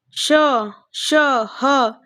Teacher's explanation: उष्म संघर्षी व्यंजन, उष्म संघर्षी व्यंजन आपका जैसे श, श, ह, ये एक उष्मा एक निकलती है हमारे मुख से जब हम बोलते हैं श, ह, जिनमें से श ये महाप्राण अघोष और जो ह है वो महाप्राण सघोष होता है।